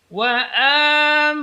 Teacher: Wa amanahum hu jelas keluar dari pangkal tenggorokan.